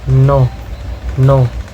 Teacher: Second is there is alveolar nasal, word like produced by tossing the tongue tip to the alveolar ridge and allowing air to escape through the nose